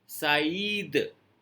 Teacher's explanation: अब किसी का नाम सईद हो तो इसको सैड नहीं पढ़ना है, SAID सैड होता है इंग्लिश में, सैड नहीं पढ़ना है, क्योंकि त्रेमा लगा हुआ है आई के ऊपर। आ का साउंड अलग, ई का साउंड अलग।